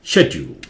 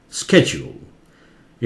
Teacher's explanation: England में उसे बोलते हैं शेड्यूल, शे जोर से ड्यूल, शेड्यूल, ठीक है। अमेरिका में इसे बोलते हैं स्केड्यूल, ये ज हो जाता है या स्के हो जाता है, स्केड्यूल।